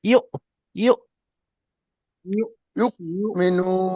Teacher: হামজা পেশ ইউ, একটু ঝাটকার সঙ্গে, ধাক্কা যেরকম লাগে।